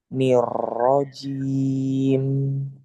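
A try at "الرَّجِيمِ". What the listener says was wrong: Tapi jangan terlalu banyak takrirnya. Nir rajim disamarkan.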